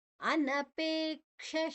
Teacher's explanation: ಇಲ್ಲಿ ಅನ ಹ್ರಸ್ವ, ಪೇ ದೀರ್ಘ